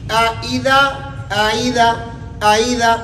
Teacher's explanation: یعنی زیر کو حمزہ اور یا مدہ کے درمیان پڑھنا ہے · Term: تسہیل کل یا